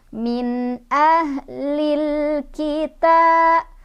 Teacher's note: Karena ada alif lam bertemu dengan huruf qomariyah yaitu kaf. Cara bacanya, lamnya dibaca jelas atau diizharkan. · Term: izhar qomariyah